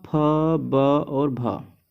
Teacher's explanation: ओष्ठ वर्ण कहा जाता है क्योंकि होठ की मदद से इनको बोला जाता है